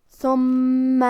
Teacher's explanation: کلمت ثم میں حرف الثاء کی ادائیگی زبان کے سر اور اوپر والے دانتوں کے اندرونی کناروں سے ہے. پھر یہاں میم پہ تشدید ہے تو ہمیں 2 حرف کے برابر میم کو پڑھنا ہے